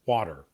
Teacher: people speak so quickly that, the T turns into a flap. D.